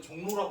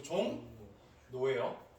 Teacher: 예, 얘도 그러면 똑같이 적으면 예, 뭐가? 리을이 니은으로 바뀌어요. 뭐의 영향을 받아서? 이응의 영향을 받아서. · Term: 비음